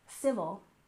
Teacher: We stress the first syllable in civil, civil. And movement, we stress the first syllable, movement, movement.